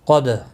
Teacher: قاف مستعلیہ ہے، پر پڑھا جائے گا، دال ساکن پر قلقلہ ہوگا